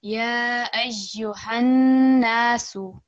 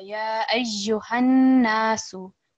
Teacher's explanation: we have noon mushaddad and we want to produce a strong nasal sound, and also we want to put stress on that letter because of the shadda on the noon.